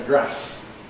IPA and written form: græs (grass)